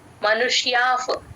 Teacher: ఒత్తు క్లియర్ గా వినిపించాలండి మనుష్య ష ని కూడా కాస్త ముద్దగా పలకాలి మనుష్యాఫ్ ఆ విసర్గ ఎఫ్ అవుతుంది